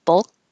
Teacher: I'm not going to release my K unless there's a word after it with a vowel